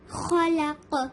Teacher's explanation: ہم کو لام کو ہیوی نہیں کرنا ہے, ہم کو خا کو ہیوی کرنا ہے اور قاف کو ہیوی کرنا ہے, اور قاف پر قلقلہ بھی کرنا ہے.